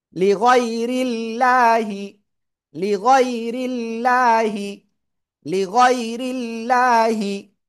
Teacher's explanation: আল্লাহ শব্দের লামের ডাইনে জের, চিকুন করে পড়তে হয়।